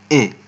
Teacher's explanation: Irabu e ni irabu ya mbele kati.